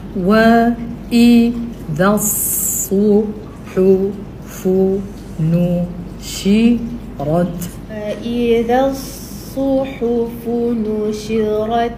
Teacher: lepas tu dia tajam sebab dia bawa sifat safir